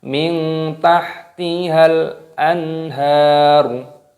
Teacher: nun sukun bertemu dengan huruf ha, hukumnya dibaca idhar halqi, dibaca jelas. Anharu, haknya baca panjang.